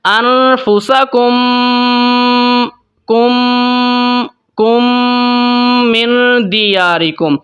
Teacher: میم ساکن کے بعد میم آ گئی ہے تو غنہ کریں گے دونوں میم کو ملا کے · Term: ادغام شفوی